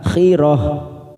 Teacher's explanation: Karena kita wakaf di sini, maka ini tak marbutoh kita baca dengan huruf ha